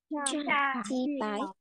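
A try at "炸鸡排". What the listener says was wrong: Không phải bái nhá, bật hơi. Phái.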